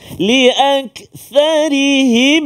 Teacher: Him kepada mim, mim mati bertemu dengan mim, dengung dua harakat